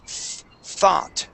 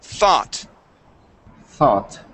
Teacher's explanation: Now, we're going to pronounce that TH sound, which is an unvoiced TH